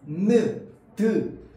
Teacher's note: 잇몸 소리라고 하거든요 잇몸소리 잇몸소리 이소리는 는 무엇과 무엇이 닿는 거냐면 윗 잇몸과요 혀끝이 닫는 겁니다